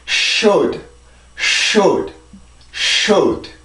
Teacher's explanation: D 발음은 치조 폐쇄음인데 치조 폐쇄음은 혀를 이용해서 치조를 막고 공기를 모았다가 내보내는 거예요. 폐쇄음들의 특징이 그렇죠.